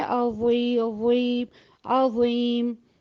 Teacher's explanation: آپ واضح طور پر محسوس کریں گے کہ آپ کی زبان کی جڑ اوپر کو اٹھ رہی ہے